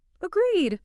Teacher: If your pitch goes up, agreed, you sound like you're asking a question. You sound unsure.